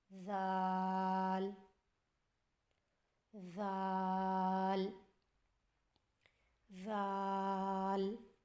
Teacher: ذال کی ادائیگی میں زبان کی نوک کو سامنے والے اوپر کے 2 دانتوں کے اندرونی کناروں سے نرمی سے لگا کر باریک آواز میں پڑھیں.